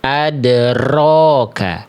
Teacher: Karena huruf r-nya getarannya berlebihan